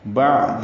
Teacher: عین وسط حلق سے نکالیں گے